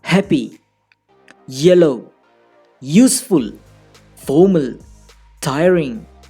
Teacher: The first syllable is always stressed. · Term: syllable stress